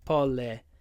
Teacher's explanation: when we say politician, the stress is on the third syllable.